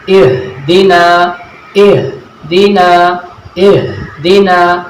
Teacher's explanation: ये हा जो है एक भारी आवाज़ सुनाई देती है